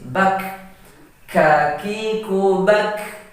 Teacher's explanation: kalau huruf kaf dia sifatnya hamas atau lemah dan ada angin yang mendesis